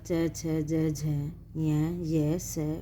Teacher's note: तालव्य, तालव्य में होता है च, छ, ज, झ, य, स और से। इन वर्णों के उच्चारण में जीभ जो है तालु, जो कठोर तालु है उसको छूती है।